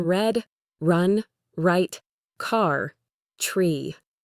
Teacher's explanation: Your tongue never touches the roof of your mouth. Instead, it pulls back slightly towards the center of your mouth, forming a little hump or a kind of bowl shape. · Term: R sound